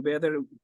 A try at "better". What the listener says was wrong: in the video you said I'd get on bitter it's not bitter it's better better